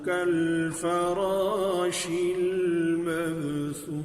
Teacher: कल्फराशी, फरा, रा पर ज़बर, उसके बाद अलिफ को भी पुर कर दिया इसलिए कि रा को पुर करके पढ़ रहे हैं